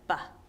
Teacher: B and P are made by your lips coming together building up pressure releasing that pressure